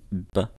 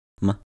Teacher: the main difference being that m is nasal, meaning that the sound is made by allowing air to escape through the nose